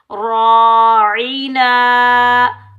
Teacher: आइन को हम हलक के दरमियान से निकालेंगे